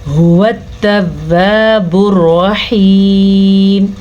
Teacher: را کو پر پڑھنا ہے کیونکہ را پہ زبر ہے. ہا کے مخرج کو واضح کر کے پڑھنا ہے.